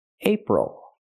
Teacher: the stress is on the first syllable, ape. The second syllable, ol, is not stressed, so we do not say April, we say April, ol.